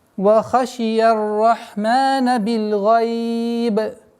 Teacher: Огласовка кесра аннулируется, переходит в сукун, и у нас появляется в размере 2, 4, 6 удлинений.